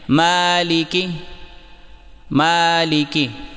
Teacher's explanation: میم کھڑا زبر ما، لام زیر لی، مالی، کاف زیر کی، مالکی۔ یہاں پر میم کو 1 الف کے برابر کھینچیں، لیکن لام اور کاف کی زیر کو بالکل لمبا نہ کریں، انہیں جلدی پڑھیں